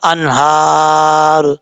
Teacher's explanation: جب سٹاپ کریں گے تو را ساکن ہو جائے گا